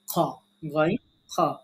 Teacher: কণ্ঠনালীর শেষ থেকে মোটা করে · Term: মাখরাজ